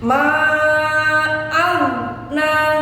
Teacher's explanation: Tidak boleh ada tawallud, ada pantulan. Sebab bukan qalqalah. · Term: huruf ghain